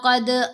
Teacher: دال پر کلکلہ ہوگا، کلکلہ کبریٰ ہے